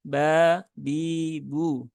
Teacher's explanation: huruf ba tidak punya sifat hams Ya sifatnya jahr maka menebalkan huruf ba itu menjadi kurang tepat nah ini termasuk · Nah, ada hembusan nafas yang keluar dengan kuat. Nah, itu bukan sifat dari huruf ba ya. Huruf ba tidak punya sifat hams. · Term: jahar